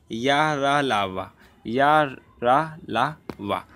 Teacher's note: उच्चारण करते समय जीभ पूरी तरह से उच्चारण अवयवों को स्पर्श नहीं करती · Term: अंतस्थ व्यंजन